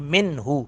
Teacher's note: نون ساکن کے بعد حمزہ ہے، ہا ہے، یہاں پہ اظہار کریں گے، نون کو بالکل ظاہر کریں گے، ناک میں آواز نہیں جائے گی